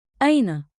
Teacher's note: Keep it rising at the end, curious, friendly.